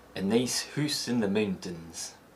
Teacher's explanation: the I and ow diphthongs start from a more central position. The ow diphthong may also be replaced with a single U sound in high-frequency words.